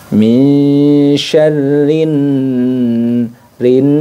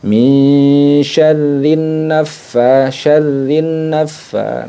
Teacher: bertasydid ini termasuk dalam kategori hukumnya adalah ghunah musyadah jadi didengungkan ya dengungkan kemudian di tahan dengungnya